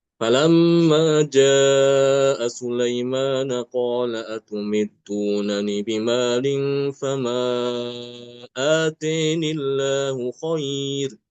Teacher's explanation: Untuk Imam Al-Kisai tidak menetapkan adanya ya zawaid. Ya, ianya dibuang. Sehingga apa?